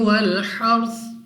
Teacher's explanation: را ساکن سے پہلے حرف پر زبر ہے تو یہ را کو پر یعنی موٹا پڑھنے کی ایک صورت ہے، تو یہاں پر ہم نے را کو موٹا پڑھنا ہے.